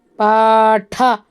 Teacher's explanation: ಮಹಾಪ್ರಾಣ, ಹಾಗಾಗಿ ಉಸಿರು ಹೊರಗಡೆ ಬರಬೇಕು. ನಿಮ್ಮ ಬಾಯಿಯ ಮುಂದೆ ನಿಮ್ಮ ಒಂದು ಹಸ್ತವನ್ನು ಇಟ್ಟು ನೀವು ಹೇಳುವಾಗ ಠ ಇದರ ಗಾಳಿ ನಿಮ್ಮ ಒಂದು ಹಸ್ತವನ್ನು ಮುಟ್ಟಬೇಕು. ಅಂದಾಗ ಮಾತ್ರ ಮಹಾಪ್ರಾಣ ಅಕ್ಷರ ಉಚ್ಚಾರಣೆ ಸರಿಯಾಗಿ ಆಗಿದೆ ಅಂತ ಗೊತ್ತಾಗುತ್ತೆ.